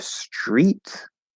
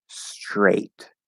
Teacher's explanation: the first one is e the first vowel on the vowel chart and the second one is a the diphthong a spelled a i which is a common spelling for i